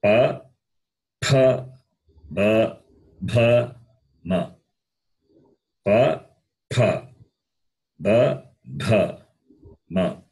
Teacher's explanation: The sound is produced with the lips. Therefore, they are called labials.